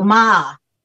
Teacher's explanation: So when it goes down and up, you go ma. So it's a down and an up, and that means horse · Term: the third one